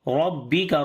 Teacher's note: Ra we read in heavy sound due to fatha sign on it. Ba we read bit strong, rabbika.